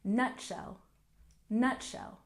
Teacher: make sure to stress the first syllable